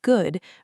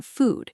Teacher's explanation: Both involve rounded lips, but in good, your lips are only slightly rounded, and the vowel is shorter. While in food, your lips are more tightly rounded and pushed slightly forward, almost like you are making a small circle with your lips.